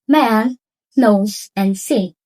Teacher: It's called nasal sounds. Nasal sounds allow the air to pass through the nose while the mouth is blocked.